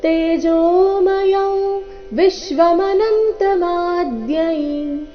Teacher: ಇಲ್ಲಿ ಅನುಸ್ವಾರದ ಉಚ್ಚಾರಣೆ ನಾಸಿಕಾ ವ ರೀತಿ, ಕಾರಣ ಮುಂದಿನ ಶಬ್ದ ಅವರ್ಗೀಯ ವ್ಯಂಜನ ವ, ವಿಶ್ವ ವದೊಂದಿಗೆನೆ ಪ್ರಾರಂಭ ಆಗ್ತಾ ಇದೆ.